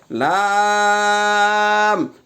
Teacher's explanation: 8 নম্বর মাখরাজ জিহ্বার আগার কিনারা সামনের উপরের দাঁতের মাড়ির সঙ্গে লাগাইয়া উচ্চারিত হয়